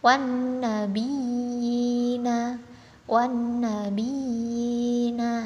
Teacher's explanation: Ya bertanda tasydid bertemu dengan ya sukun. Nah, itu dibaca 2 harokat tanpa gunnah. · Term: mat tamkin